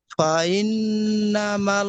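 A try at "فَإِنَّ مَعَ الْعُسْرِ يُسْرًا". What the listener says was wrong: মাল নয়, দেখেন, মিম জবর মা, আইন লাম জবর আল, মা আল উসরি ইউসর।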